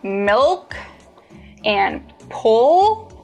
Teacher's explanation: In contrast to the light L, when you produce the dark L, the back of your tongue bunches.